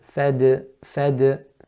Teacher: it's from the tip of the tongue with the roots of the upper incisors so it touches where the root of the upper incisors is